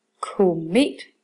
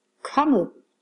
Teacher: Jeg bruger lidt længere tid på at udtale o i k end jeg gør når jeg siger kommet